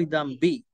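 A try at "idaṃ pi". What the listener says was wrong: No b. No b.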